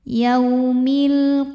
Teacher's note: Karena alif lam menghadapi huruf qamariyah yaitu qaf, maka lam sukun kita bunyikan dengan idhar jelas atau disebut dengan idhar qamari